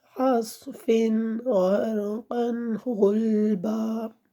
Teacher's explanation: نون تنوین میں غنہ نہیں کیا، کیونکہ آگے حروف ہلکی میں سے غین آ رہا ہے